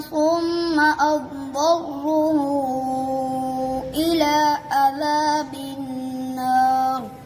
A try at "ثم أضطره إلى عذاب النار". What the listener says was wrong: आपने सुम्मा पे गुन्ना भी छोड़ दिया और अब दर्रु पढ़ दिया आपने हाँ सुम्मा से पढ़ो